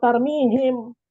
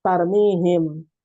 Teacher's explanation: Kalau tarmihim mulutnya ngatup, jadi izhar syafawi, bukan jadi ikhfa syafawi.